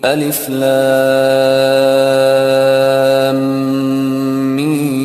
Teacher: 6 حرکت کرے، بیچ میں غنہ بھی کرے، بیچ میں غنہ بھی کرے. لام پڑھ کے میم، دوسرا میم پڑھنا شروع کرنے سے پہلے غنہ کرے.